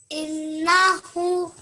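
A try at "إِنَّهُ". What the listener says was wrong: So you have to make the ha a bit longer than that.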